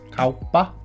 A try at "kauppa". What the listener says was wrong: Mm-hmm. That wasn't even too bad. I'm not even going to correct you on that.